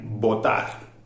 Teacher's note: Ya os he dicho antes que botar, se cierran los labios. Es una oclusiva bilabial. Los dos labios se cierran y no dejan pasar el aire.